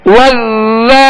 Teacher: ذال کو باریک اور نرمی کے ساتھ